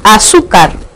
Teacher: Azúcar es una palabra grave porque la mayor fuerza de voz recae sobre la sílaba tu, que ocupa la penúltima posición.